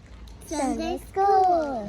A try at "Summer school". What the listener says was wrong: Not Sunday. Summer. Summer school. Summer school. Summer school.